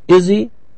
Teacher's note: The H was not pronounced.